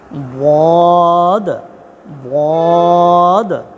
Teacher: জিহ্বার গোড়া, জিহ্বার গোড়া, জিহ্বার গোড়া সামনের উপরের এক পাশে মারিদাতের গোড়ার সঙ্গে লাগে